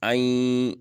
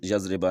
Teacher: یہاں پر نون غنہ کی آواز آ رہی ہے، نون کی آواز غنہ میں بدل جائے گی